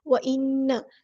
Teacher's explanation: نون پہ غنہ زمانی ہو رہا ہے، ہم یہاں پہ ایک الف کے برابر رکیں گے